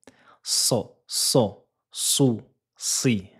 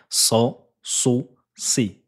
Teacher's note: La langue se positionne ici, vous entendez un léger sifflement, l'arrière de votre langue va gonfler pour former cette emphase, cette lettre emphatique